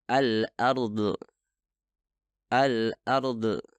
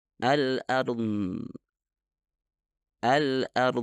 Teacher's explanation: suara Dod tidak dihasilkan dengan mengeluarkan udara itu bukan suara yang meledak melainkan dihasilkan ketika udara terbentuk di belakang lidah melepaskan udara ketika